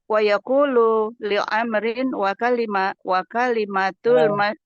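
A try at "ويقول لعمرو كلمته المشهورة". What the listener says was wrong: wawunya nggak dibaca dia. Wawunya nggak dibaca. Wa yaqulu li Amrin.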